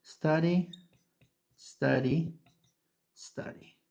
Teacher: El sonido empieza desde la s, ¿okay? No empieza desde la e. Sí, ese es un error común que los hablantes de español tienen, que es ponerle una e cuando una palabra comienza con s más consonante, que en inglés se llaman s clusters, se llama s clusters, ¿no?